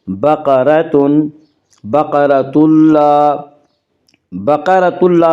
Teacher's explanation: بقرۃ اللہ میں ادغام بلا غنہ ہوگا۔ اس کا قاعدہ یہ ہے کہ نون ساکن یا تنوین کے بعد اگر حروف یرملون میں سے کوئی حرف آئے تو ادغام ہوگا، لام و را میں ادغام بلا غنہ ہوگا۔